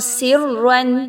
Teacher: را جو ہے وہ موٹی پڑھی جائے گی کیونکہ را پر 2 زبر کی تنوین ہے اور مشدد بھی ہے، تو ایسی را کو ہم پر پڑھیں گے سرا، ٹھیک ہے۔